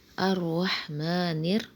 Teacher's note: یہاں پہ را کو ہم موٹا پڑھیں گے